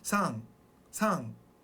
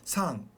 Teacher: They have like one version, and it goes kind of in the back of your mouth. It's like an N, almost like an NG sound.